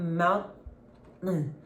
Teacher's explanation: It's not a real T, a true T. But you are going to stop the T. · É aquele T que você quase pronuncia, mas você não pronuncia